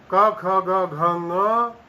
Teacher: क ख ग घ ङ हकार और विसर्ग, इन सब ध्वनियों का उच्चारण स्थान कंठ होता है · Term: कवर्ग